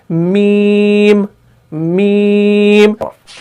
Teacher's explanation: और एक बात आपने यहां पर नोट करनी है, जब भी आप मीम को पढ़ते हैं और आप ये महसूस कर रहे होंगे कि हमारे नाक के बांसे में भी थोड़ी सी आवाज गूंज रही है